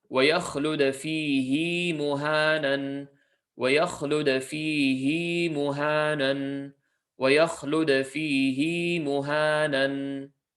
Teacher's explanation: this ha is elongated to 2 lengths long, despite the fact that it's not coming between two vowels